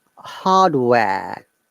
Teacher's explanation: Yes, it is ha long ha. Then no R sound.